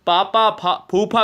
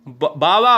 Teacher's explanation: और ये दोस्तों पा वर्ग, यानी जिसका स्पर्श व्यंजन, जिसको वायु होठों से स्पर्श करते हुए निकलती है, होठों से टच करके जाती है, वो ओष्ठ है। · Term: ओष्ठ व्यंजन